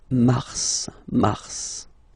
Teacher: Okay, so in a way it's an exception because normally final S is not pronounced in French. Okay, we've got some exceptions and this one is one of them. So mars, pronounce the final S